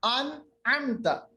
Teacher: नून की आवाज हमने इजहार की, जाहिर की, इसके बाद आगे बढ़े, कोई गुन्ना नहीं, नाक के अंदर किसी आवाज को हमने नहीं रखा, ना हमने आवाज को छुपाया।